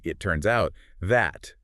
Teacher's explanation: The T in it is almost entirely swallowed, and the S at the end of turns forcefully links directly into the O of out.